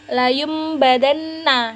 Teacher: nunnya tuh diganti kayak jadi mim gitu loh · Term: iklab